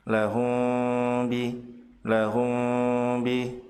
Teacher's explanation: sementara me mati bertemu dengan ba disebut sebagai Ikhfa Syafawi yaitu membaca mim sukun dengan samar ditahan dua harokat disertai dengan guna